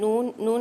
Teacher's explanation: तरफे लिसान जब नयाब से लेकर सनाया तक के दांतों की जड़ों से लगे तब जाकर नून अदा होता है